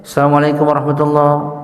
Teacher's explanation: Dia bacanya assalamualaikum warahmatullah, alif lamnya terbuang, nggak dibaca